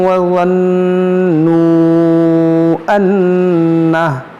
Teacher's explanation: یہاں پر دیکھیں نون مشدد ہے, اس میں غنہ کریں گے